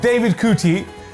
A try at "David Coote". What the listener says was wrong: It's David Coote. The E is silent.